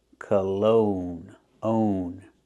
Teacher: put the stress on the second syllable make the long o sound like no and go